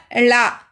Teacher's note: நாவின் இரு பக்கங்கள் மேல் அன்னத்தின் நடுப்பகுதியை தொடுதலால் லகரம் தோன்றும். இதனை பொது லகரம் என்கிறோம்.